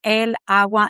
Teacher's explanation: It's because agua starts with a strong A. And when you say la agua, it's kind of like if you listen to it, I'm losing one of those A's in my pronunciation.